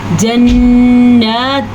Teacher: یہاں پہ اس لیے غنہ کیونکہ نون کے اوپر بھی شد آ گئی ہے، اور یہاں پہ اس لیے غنہ کیونکہ یہاں پہ ادغام بالغنہ کا قاعدہ ہو رہا ہے.